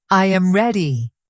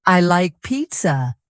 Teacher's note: if you make a statement, your voice falls.